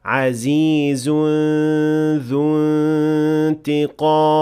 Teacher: this إخفاء has an empty mouth ghunna, since the letter that comes after it is the dhal, and that is an empty mouth letter